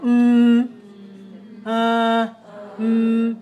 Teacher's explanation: when you put your hand right here on your throat you feel okay go M you feel the vibration here okay so that is a voiced sound